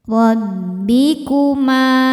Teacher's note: Dibaca secara tafkhim karena berharakat fathah. Cara bacanya ditebalkan. Dobbikuma. Ma hukumnya mad thobi'i zohiri.